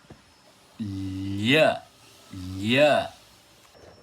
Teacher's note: a minha língua encostou bem lá na parte dura do céu da boca, que se chama palato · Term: consoantes palatais